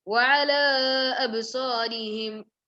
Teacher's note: there is an alif with a mad sign on top of it. It should be done 2 to 4 counts.